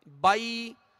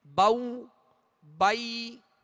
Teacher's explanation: زبر ادا ہو کر جب یا ادا کریں گے تو آواز کو گرا دیں گے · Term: یا لین